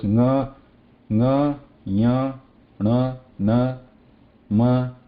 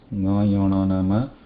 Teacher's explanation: The last column of the Vargiya letters, nga, ya, na, ma, there is a touch plus air coming out. But in case of Anuswara, there is no touch involved, just the air passes out.